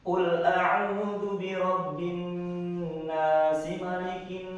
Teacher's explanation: Ketika diwasolkan menjadi anas ini menjadi mad tabi'i. Ketika diwakafkan menjadi mad alif disukun.